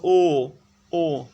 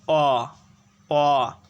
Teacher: ও এর উচ্চারণকালে ঠোঁট অ অপেক্ষা অধিক সংকুচিত হয়। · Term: সংবৃত